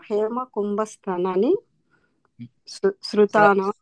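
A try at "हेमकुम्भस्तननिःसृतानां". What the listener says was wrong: స్థనా దగ్గర దీర్ఘం లేదు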